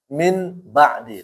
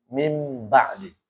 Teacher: Suara nun itu diubah menjadi suara mim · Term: iqrab